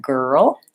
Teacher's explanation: The L, because it's a final L, has this kind of sound before it, ol, rather than the L at the start of words like light and little. And then making sure I have a tight back R for that girl.